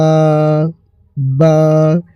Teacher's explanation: এই বা অক্ষরটি দুই ঠোটের উপরে ঠোট রেখে বের হবে এই অক্ষরটি। বা এই অক্ষরটিকে আকালি পরিমাণ টান দিবেন।